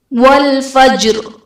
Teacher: والفجر میں جیم حرف قلقلہ ساکن ہے تو یہاں پر قلقلہ خوب ظاہر کریں گے